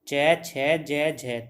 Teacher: च, छ, ज, झ तालव्य व्यंजन है